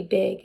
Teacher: involves voicing of a normally unvoiced consonant. So pig would be big, and that is regressive. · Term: pre-vocalic voicing